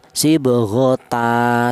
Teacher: tanwinnya ini diganti fathah biasa dan dipanjangkan satu alif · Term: mad iwat